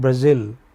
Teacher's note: This is stressed on the final syllable.